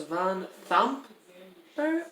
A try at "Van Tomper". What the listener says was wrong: I would not pronounce it as the. I would pronounce it to. But we could be wrong.